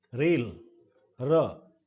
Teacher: Active articulator tip of the tongue, passive articulator is rear part of the teeth ridge. A very common variety of r sound in British English is example of post alveolar, और example है initial sound of the word rail. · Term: पोस्ट एल्वियोलर